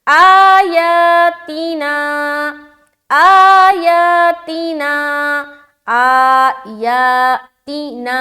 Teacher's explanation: نا کو کھینچیں گے کیونکہ یہاں پر آلریڈی الف مدہ ہو رہا ہے، الف خالی ہے، اس سے پہلے زبر ہے۔ · تی کو ہم جل پڑھ رہے، باقی سب کو کھینچنا ہے